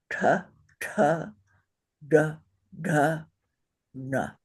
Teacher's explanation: since it's the cerebral position we know we're going to put our tongue straight up on the top of our roof of our mouth